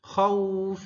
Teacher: mi hi-nya harus jelas jangan seperti alif al hati-hati ala khaufim khnya juga harus jelas khau hati-hati bukan khaufim bukan tapi khaufim khaufim khaufim ya jadi dia adalah madlin ya jadi bukan khnya yang panjang tapi u-nya yang panjang khauf Jangan cepat-cepat.